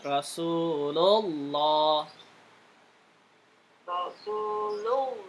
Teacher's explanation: Su-nya panjang kan dua harokat.